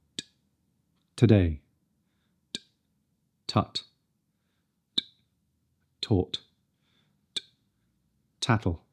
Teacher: The tip of the tongue presses against the front of the alveolar ridge, which is the bumpy ridge just behind the top teeth. Let the air build up and then release it over the tip of the tongue.